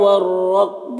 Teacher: واو میں کھڑا زبر ہے، 1 الف کے برابر کھینچیں گے، یا میں کوئی حرکت نہیں، اس کو نہیں پڑھنا. والرکب رائے مشددہ کے اوپر زبر ہے تو را کو پر پڑھیں گے